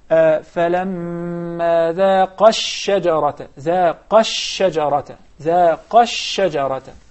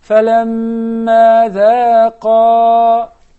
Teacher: when I stop at the word ذَاقَ, I prolong it حركتين. And I say, فَلَمَّا ذَاقَ, in order to explain that is dual.